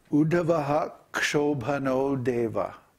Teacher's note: So anyway, in the style of South India, Udupi style, it's called, when you have a word that ends with Visarga, and the next word begins with Ksha, you pronounce the Visarga